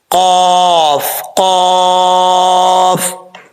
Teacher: اس قاف کا مخرج ہے 2 نقطوں والے قاف کا، زبان کی جڑ اوپر والے تالو کے نرم حصے سے لگے تو قاف پڑھا جاتا ہے